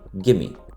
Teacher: Le d de friendly disparaît de même pour donner friendly. Le v de give me est élidé pour donner gimme. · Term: élision